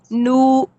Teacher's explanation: جیسا کہ یہاں پہ واو مدہ ہے تو واو مدہ تو جو سے ادا ہوتا ہے، خشم سے تو نہیں ادا ہوتا. نون کا مخرج خشم میں جاتا ہے آٹومیٹکلی، جو اس کا گنہ آنی ہے وہ جاتا ہے نو.